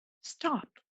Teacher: the T is unaspirated